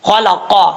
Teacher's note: زبان کی جڑ لگے گی تو قاف پڑھا جائے گا